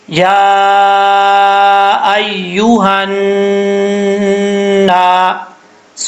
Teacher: نون کے ساتھ ملائیں گے کیونکہ نون کے اوپر شد ہے، نون کے اوپر شد ہونے کی وجہ سے ایک الف کی مقدار غنہ کیا جائے گا